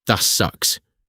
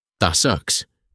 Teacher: Make it short and sharp. Do not over pronounce the T in the word that. The T stops down in your throat.